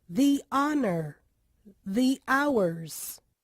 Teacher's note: em palavras em que o H no início da palavra não é pronunciado, o E do the também tem som de I